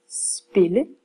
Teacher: hvis jeg har ordet spille der lyder Min korte vokal her som e